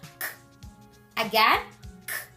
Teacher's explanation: To make it, open your mouth a little and put your tongue toward the back of your throat, like this. Then, release the air without using your voice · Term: K sound